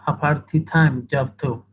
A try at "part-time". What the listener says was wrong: Part-time, no party. Party is party.